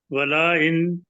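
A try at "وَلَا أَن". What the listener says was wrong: کہہ دیا نا، آپ اس کو کوئی چھوٹا کریں، والا ان۔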